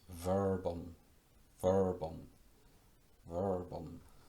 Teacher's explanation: Voiced labiodental fricative. Fricative because it's pronounced by making, you make friction in the labium or lip, and the dentes, which is Latin for dentes, which is Latin for teeth.